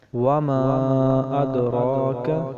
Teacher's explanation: ابرار لفی علیین، ان کے اوپر تشدید ہے۔ وما ادراک، وما کے اوپر بھی مد ہے، یہ بھی مد منفصل ہے، اسے بھی ہم 3 یا 4 الف مقدار لمبا کریں گے